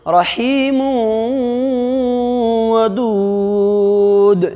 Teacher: دو پیش کی تنوین کے بعد دوسرے کلمہ میں واو ہے، اس لیے دو پیش کی تنوین کو ملا کر کے واو سے ملا کر کے گننا کے ساتھ پڑھیں گے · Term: ادغام ناقص